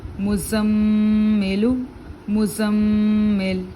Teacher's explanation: میم زا پیش مز، زا میم زبر زم، مزم، میم زیر می، مزمی، لام پیش لو، مزملو، مزمل۔ دانتوں میں ہلکی سی جھری رکھیں گے اور پھر زور دیں گے میم، زا اور میم کو، کیونکہ دونوں پر تشدید ہے اور دونوں کو سختی سے آپ پڑھیں گے۔